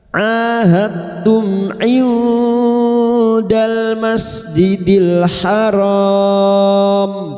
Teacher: memasukkan bunyi Dal pada huruf ta dengan menghilangkan sifat qalqalahnya. Sifat qalqalah dari huruf dal ini hilang. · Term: idgham mutajanisan